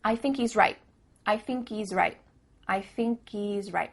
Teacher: at the end of the word right there's no T sound